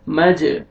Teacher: جیم قلقلہ حروف قلقلہ میں سے ڈبل ساؤنڈ آئے گا